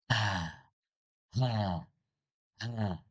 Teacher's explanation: Dua sifat mengalir. Nafasnya mengalir, suaranya mengalir.